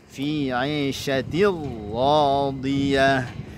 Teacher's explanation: Nah, ra-nya dibaca tebal. Ra ya, radiyah diberikan nabrah pada huruf ra-nya karena berharokat, ada tanda tasydidnya